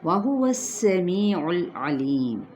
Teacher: واو کی زبر کو سین کے ساتھ اور سین پر سیٹی کو واضح کریں، می پہ یائے مدہ، لام کو ہلانا نہیں، علیم لی پہ یائے مدہ، اور ہم نے جب میم پہ وقف کیا عارضی سکون لے کر آئے تو وقف بالاسکان ہوگا۔